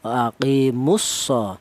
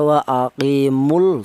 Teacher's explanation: Lam matinya dilebur ke huruf shad. Jadi namanya idgham itu melebur ya.